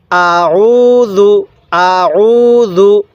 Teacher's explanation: এই আইনটাকেও হামজা উচ্চারণ করি তখন আমাদের পড়াটা সহি হয় না আমরা আইনটি যখন উচ্চারণ করব তখন গলার মধ্যে একটু চাপ দিলে আইনটা সহি উচ্চারণ হবে